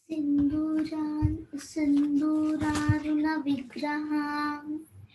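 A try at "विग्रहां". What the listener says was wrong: Ham no. Han. Sindhuraruna Vigrahan.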